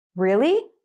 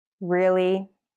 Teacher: to sound excited or surprised you start and finish higher but to sound annoyed the tones are lower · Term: rising falling tone